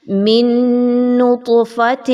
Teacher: نون ساکن کے بعد نون کا حرف ہے، ادغام مع الغنہ